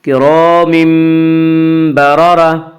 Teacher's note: کرام بررہ، کرام مد، الف مدہ، الف ہمیشہ مدہ ہوتا ہے اور الف مدہ سے پہلے ہمیشہ زبر ہوتا ہے، اس لیے الف مدہ کو ایک الف کے برابر کھینچ کر پڑھیں گے۔ کرام بررہ، کرام بررہ میں قلب ہوگا۔